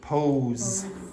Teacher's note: make that O longer